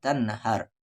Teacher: نام ہے تن، اور نون ساکن کے بعد آگے ہا ہے، یعنی اس نون ساکن کی آواز کو کلیئرلی پڑھیں گے